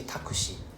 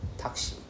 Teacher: you realize how I never pronounce a U